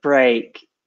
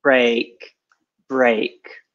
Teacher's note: a lot of students say black or they shortened it it's a longer e